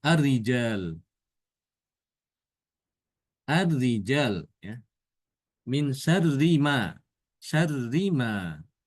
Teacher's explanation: Rinya itu ro-nya dibaca tipis. Karena dalam keadaan kasroh.